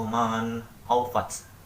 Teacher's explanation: Hukum bacaan yang kelima adalah izhar, terdapat di ayat ke-8, yaitu man haufat. Di situ terdapat nun mati bertemu dengan huruf kha, sehingga dalam pembacaannya harus jelas dan tidak boleh didengungkan.